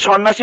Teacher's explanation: মধ্য জফলাটা কোনো উচ্চারণ হবে না, আর মধ্য জফলাটা যে বর্ণের সাথে থাকবে সেটা দ্বিত্ব হবে, ডাবল হবে। তো এই যে সন্ন্যাসী বানানে সন্ন্যাসী এই দন্তের ন দুইবারই উচ্চারণ হয়েছে।